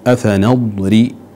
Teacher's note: الضاد، نأتي بالاستطالة فيها وبيان إطباق وصفة الاستعلاء